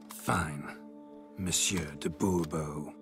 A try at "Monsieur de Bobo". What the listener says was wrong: The emphasis falls on the last syllable. Bobo?